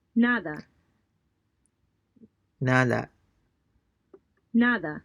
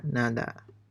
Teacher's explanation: This time note that the D sound is soft and sounds much more like a TH than a D.